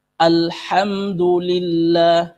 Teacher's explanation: ketika lafzul jalal lah Allah diawali oleh kasrah lillah nillah, maka ini dibaca tarqik tipis